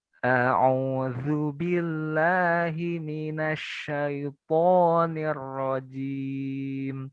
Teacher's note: tempat keluarnya huruf hamzah itu di pangkal tenggorokan. Nah, halki, aksol halki ya.